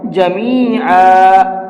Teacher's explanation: دو زبر پر جب وقف کرتے ہیں تو ایک زبر کو ختم کر دیتے ہیں اور ایک الف ساتھ میں لگا کر کے پڑھتے ہیں